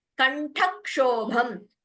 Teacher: कंठक्षोभम ठ and bha are महाप्राण